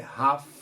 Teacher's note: Não fala esse L, é half.